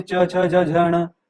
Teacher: तो ये च वाले, च, छ, ज, झ, ण, ये तालु के स्पर्श से निकलती है इसकी आवाज